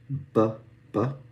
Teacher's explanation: Here is the actual sound that this makes, B, right? So it's bilabial, both lips, B, B. It's a bilabial stop.